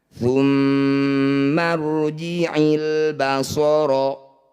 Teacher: pada semua ayat di Alquran disebut bacaan gunah musyadadah cara bacanya bunyi mim dengungkan ditahan dulu dua harakat